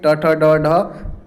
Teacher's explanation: मूर्धा से उच्चारित होते हैं ट वर्ग के